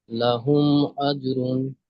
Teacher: মিমকে বিনা গুণনায় জাহির করে পড়তে হবে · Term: ইজহারে সাফাবি